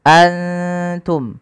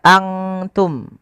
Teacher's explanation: samarkan nunnya kepada makhraj daripada huruf ta. Kalau makhrajnya misalkan ta itu makhrajnya adalah perbatasan ujung sari kita, ujung lidah kita menempelkan dengan di atas itu gusi atas dan gigi sari atasnya, ya, di perbatasannya, di ujung pangkalnya. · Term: ikhfa